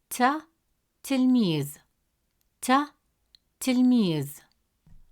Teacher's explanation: It's a light clear sound made at the front of the mouth.